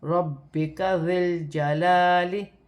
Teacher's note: را پر زبر کی حرکت ہے، را موٹی پڑھی جائے گی